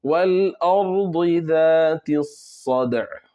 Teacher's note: صاد موٹا پڑھ کے آگے قلقلہ کرنا ہے